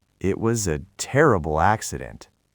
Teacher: >> Conversely, when we talk about something very serious or very sad, we drop our pitch below our normal speaking voice. We go into a low register.